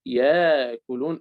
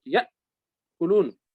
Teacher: لكن لا ننطق ألفا وإنما ننطق همزة